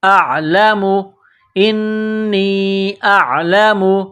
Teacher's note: یہ عین گلے کے درمیان سے عین کو نکالنا ہے، عین کو زور لگا کر نکالیں گے۔